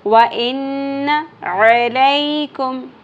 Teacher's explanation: عین باریک وسط حلق سے